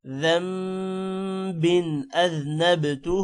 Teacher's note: ربی من کلی ذنب اذنبتہ، ذم غنہ کرنا ہے یہاں پر۔ ذنب بن پر غنہ نہیں ہوگا کیونکہ آگے حروف حلقی حمزہ ہے